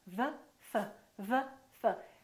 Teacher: the position of the lips is the same except one is voiced and one is voiceless one uses the vocal cords and one doesn't so why is